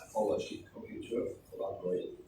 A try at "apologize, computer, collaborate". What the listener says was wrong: Actually, you're giving this sound. This is considered the weakest sound in the English language. Okay? So you shouldn't give it any importance or any stress.